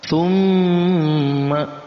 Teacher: jangan cuma didengungnya saja, tapi dipanjangkan 2 harakat · Di antaranya yang pertama, mim yang bertasydid dimasuk dalam gunnah musyaddadah. Ya, mim yang bertasydid kita baca dengan dengung dan dipanjangkan 2 harakat.